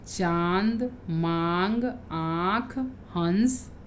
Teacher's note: ले जाते हैं तो उनके ऊपर चंद्र बिंदु लगाया जाता है नाक से बोले जाने के कारण इन स्वरों को अनुनासिक कहा जाता है